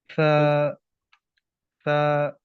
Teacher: इसमें बस इस बात का ध्यान रखना है, सीटी की आवाज़ नहीं आनी चाहिए। और जब हम जुबान को दांतों के साथ, ऊपर वाले दांत के साथ जोड़े रखेंगे सा पढ़ते हुए, तो ये सवाल ही पैदा नहीं होता कि सीटी की आवाज़ निकल सके। हाँ, अगर हमने जुबान ऊपर वाले दांत से हटा दी ये पढ़ने के दौरान, तब सीटी की आवाज़ निकलेगी।